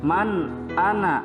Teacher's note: nun mati yang bertemu dengan huruf alif, maka harus dibacanya jelas menyerupai huruf nun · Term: izhar